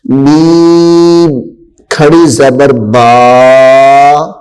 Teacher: اب اس کی آواز ناک میں نہیں لے کے جانی، میم کی، میم ایسے نہیں پڑھنا، یہ آواز پھر ناک میں چلی جائے گی.